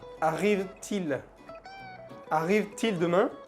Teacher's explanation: se hace una liaison, se pronuncia la última T, til, arrive-t-il.